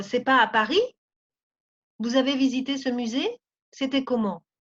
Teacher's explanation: Todo eso son preguntas. Entonces sube la entonación.